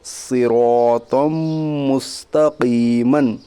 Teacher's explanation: میم کے اوپر تشدید ہے، تشدید والے حرف کو مشدد کہتے ہیں۔ میم مشدد کے پڑھنے میں 1 الف کے برابر غنہ ہوگا · یا ساکن سے پہلے زیر ہے، اس لیے یا مدہ ہوگا، یا مدہ کو 1 الف کے برابر کھینچ کر پڑھیے